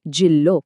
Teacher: સ્વર નાનો થઈ જાય છે એટલે કે હસ્વ જેમ કે જીલ્લો લ પર ભાર આવ્યો એટલે જી નાનો થઈ ગયો